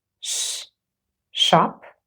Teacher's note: sh is a voiceless post Alva frive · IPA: /ʃ/